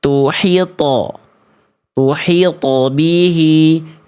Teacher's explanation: Karena pantulan to sukunnya tuh bihi dibaca terlalu tipis. Sedangkan th pantulannya th itu huruf tebal. Maka pantulannya harus tebal. Bukan tuh tapi tuhito.